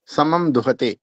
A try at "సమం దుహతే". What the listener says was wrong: దీర్ఘం లేదు గురుజీ, దుహతే అని.